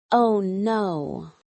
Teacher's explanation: negative surprises often have a falling intonation like, oh no.